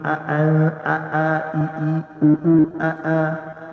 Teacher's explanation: Hamzah dia terputus suara, dia keras sikit.